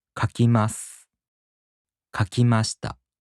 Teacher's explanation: In the present tense affirmative and the past tense affirmative, the accent falls on ま. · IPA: [kakimaꜜsu] [kakimaꜜshita]